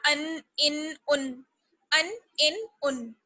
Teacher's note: تنوین کی آواز ناک میں جاتی ہے